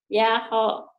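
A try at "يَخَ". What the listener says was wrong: Yako. Yako. Kho-nya. Baju koko. Jangan baju hoho. Baju koko. Yako.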